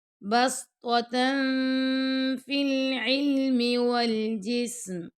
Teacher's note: تا 2 زبر تن کے بعد آ گیا فا، تو یہاں پہ آپ نے اخفا کرنا ہے